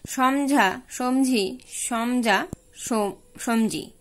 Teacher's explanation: সঘোষ মহাপ্রাণ ধ্বনি শব্দের মাঝে এবং শেষে থাকলে তা পরিবর্তিত হয়ে অল্পপ্রাণ ধ্বনিতে পরিণত হয়, যেমন সমঝা, সমঝি, সমজা, সমজি।